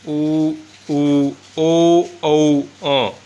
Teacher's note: जिन स्वरों के उच्चारण में ओंठों का आकार गोल हो जाता है उन्हें कहते हैं वृत्ताकार स्वर।